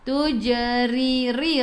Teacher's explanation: ra baris bawah kena baca dengan senyum nipis. Mun sebelum huruf akhir ada waw yang tak ada baris ma'ril sukun boleh baca 2, 4 atau 6 harakat mematikan dengan huruf nun hujung lidah menyentuh kursi atas.